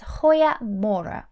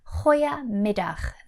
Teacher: the G's have a very guttural sound, a very harsh h sound. It's almost like you're clearing your throat as you speak.